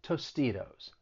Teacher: that second t i'm gonna use a flat t comes between two vowels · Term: flap T